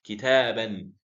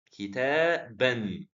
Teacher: So we are doubling the haraka when we write the Tanween. But when it comes to the pronunciation, the Tanween is actually a Noon Sakin